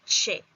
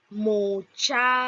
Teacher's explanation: es una consonante linguo palatal o palatal africada sorda